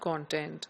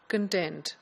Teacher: So in a noun, the stress is on the first syllable, whereas in a verb, the stress is on the second syllable.